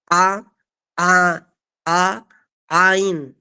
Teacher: Huruf Ain termasuk makhraj al-halqi. Tepatnya adalah di wastul halqi, tengah tenggorokan. Jangan sampai keliru masuknya di hidung.